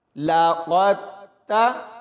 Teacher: قاف کو موٹا پڑھیں گے اور پھر آگے تا کے ساتھ ملائیں گے اور سختی سے پڑھا جائے گا، اور اس کے بعد یہاں پر دھیان سے پڑھنا ہے کیونکہ یہاں تا اور طوا میں فرق کرنا ہے۔